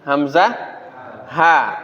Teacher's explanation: Di mana tempat keluarnya supaya kita bisa mengidentifikasinya kan ini pangkal tenggorokan Hamzah ha